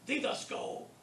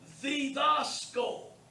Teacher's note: Notice the accent is on the alpha. It isn't on the iota, didasko. It's on the alpha.